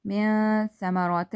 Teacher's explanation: So it's gonna be ikhfa here. Okay, we're gonna be taking the sound of the noon into the nose